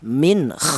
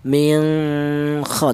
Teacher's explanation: nun mati ini cara bacanya dibaca jelas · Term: izhar